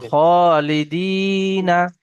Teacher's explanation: Reading পড়ার সময়ও ইয়া মাদ্দা একালি পরিমাণ, পরিপূর্ণ একালি পরিমাণ টান দিতে হবে।